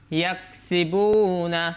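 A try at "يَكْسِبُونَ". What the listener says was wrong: হলো না তো, ইয়াক কাফের মধ্যে তো হামস আছে, ইয়াক ইয়াক ইয়াক সিবুনা।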